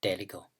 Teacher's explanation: the lexical vowel e has been raised to I